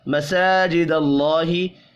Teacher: اللہ کا نام زبر کی وجہ سے پر پڑھا جائے گا